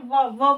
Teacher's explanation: दांत भी बोल रहे हैं और ओठ भी बोल रहे हैं। मतलब अगर आप बोलेंगे व बोलेंगे ना तो व तो आपके दांत भी टच करेंगे और व होठ भी टच करेंगे। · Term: दंतोष्ठ